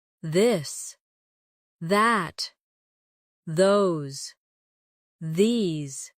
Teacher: Now practice the softer version of th where you let your tongue touch your teeth lightly but use your voice